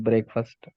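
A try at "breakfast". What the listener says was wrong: ஓ, பிரேக்ஃபாஸ்ட். அது பிரேக்ஃபாஸ்ட் படிக்க கூடாது. பிரேக்ஃபாஸ்ட், பிரேக்ஃபாஸ்ட், பிரேக்ஃபாஸ்ட் ரெண்டா படிச்சிட கூடாது. பிரேக்ஃபாஸ்ட், பிரேக்ஃபாஸ்ட், பிரேக்ஃபாஸ்ட். ஒரே வார்த்தை, ரெண்டு வார்த்தை, ஒரே வார்த்தை.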